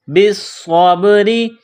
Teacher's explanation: با کو صاد کے ساتھ ملانا ہے، صاد میں سیٹی کی آواز پیدا کرنی ہے، صاد کو موٹا کرنا ہے. صاد کو با کے ساتھ ملائیں گے، با ساکن ہے تو یہاں قلقلہ کریں گے.